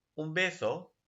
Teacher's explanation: The N becomes bilabial before a bilabial sound. So the N is normally an alveolar sound. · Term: bilabial assimilation